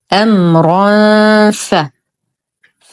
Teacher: فالحكم اخفاء حقيقي مع غنه كان مرققه